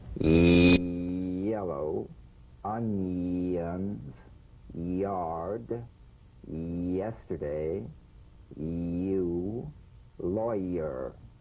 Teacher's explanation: Feel the Y buzz quickly cut off as it slides into the following vowel. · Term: resonant Y